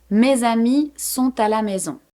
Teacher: Par exemple, mes amis sont à la maison. Here, I'm pronouncing the S of mes just because the next word starts with a vowel. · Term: liaison